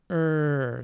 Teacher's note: i have my tongue tip going a little bit back behind the alveolar ridge